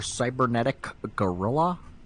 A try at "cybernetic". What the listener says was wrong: You gotta put more emphasis on the C at the end of cybernetic.